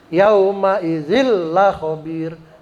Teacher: Cukup digentak aja, ditekan gitu tapi enggak boleh dibaca gunah.